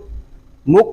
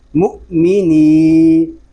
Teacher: اس کو مک نہیں پڑھیں گے، کاف کی آواز نہیں آئے گی بلکہ جھٹکا دیں گے حمزہ ساکنہ میں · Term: حمزہ ساکنہ میں جھٹکا